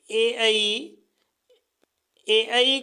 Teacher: में उ उ इनको ओट से बोला जाता है ए आई ए आई का निर्माण ए प्लस ई से हुआ है इसलिए इसे कंठ व तालू बोला जाता है